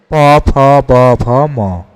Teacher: কোনগুলো ওষ্ঠধ্বনি? ওষ্ঠধ্বনি হচ্ছে প, ফ, ব, ভ, ম।